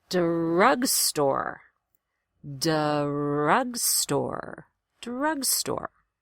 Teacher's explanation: drugstore is a compound word so you're going to stress both syllables pretty equally drugstore that doesn't happen in most words but in compound words